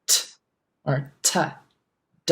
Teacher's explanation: You're going to have a lot more air with T.